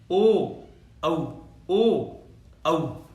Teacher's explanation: अपने आप बोल करके आप सोच लो क्या होगा इसका, ओ देखो होठों पे प्रभाव पड़ रहा है ना, ओ औ, है ना, क्या हो रहा है, कंठ और ओष्ठ, यानी गले पर भी जोर पड़ रहा है और होठों का होठ भी काम कर रहे हैं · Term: कंठोष्ठ